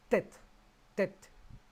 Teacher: Se articula aplicando la lengua en la parte anterior de la bóveda, aquí arriba, detrás de los dientes, en el paladar, y resulta una T enfática más fuerte que la nuestra